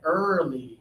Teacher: Yeah, for this one, we have to think about our lips. Our lips are forward, but still open.